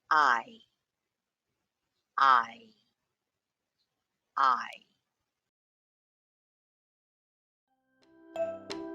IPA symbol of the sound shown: aɪ